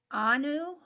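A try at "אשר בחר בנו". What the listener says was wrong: Banu with a bet. Asher Bahar Banu.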